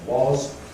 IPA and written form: wɒz (was)